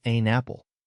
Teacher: I'm moving that N over to the next word like I'm sharing my snacks.